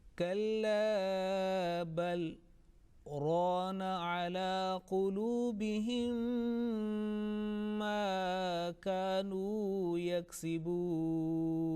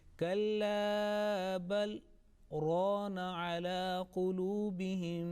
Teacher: a little pause is there, and my breath is intact. It's not broken, though the short pause is made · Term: sakta